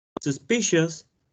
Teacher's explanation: suspicious has also three syllables and the stress is on the second syllable